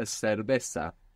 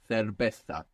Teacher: pronounced sion, like an S, in most of the Spanish-speaking world, or in most of Spain, it's pronounced thion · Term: so sound